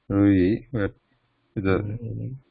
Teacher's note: The muscles, the throat is not relaxed. Re. It is tense.